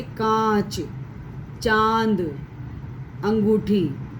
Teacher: इनका उच्चारण करते समय बच्चों ध्वनि नाक और मुंह दोनों से निकलती है, जैसे कांच, चांद, अंगूठी आदि। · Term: अनुनासिक